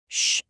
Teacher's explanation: Shh is that quiet, breathy sound, like you're telling someone to be quiet.